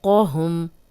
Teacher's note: ایلا طیری فوقہم، فو واؤلین ہے، جزم والی واؤ، پیچھے فا پہ زبر، قوہم، قوف کو موٹا پڑھیں گے